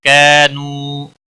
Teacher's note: کا الف مدہ ہے ایک الف کے برابر کھینچ کر پڑھیں گے